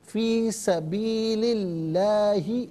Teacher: لفظ اللہ کی لام سے پہلے والے حرف لام کے نیچے زیر ہے تو لفظ اللہ کی لام کو باریک کر کے پڑھا جائے گا